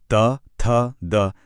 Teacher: दांतों की मदद से बोले जाते हैं